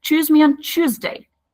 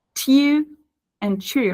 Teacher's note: they don't go for the TU sound, they change it to ch sound